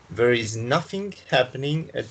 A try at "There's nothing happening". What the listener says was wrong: Okay, you don't say there is because it's abbreviated, so you must pronounce it in the abbreviated way, which is there's. There's with the S.